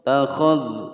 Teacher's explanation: tidak boleh memantul, ya, karena dzal bukan huruf qalqalah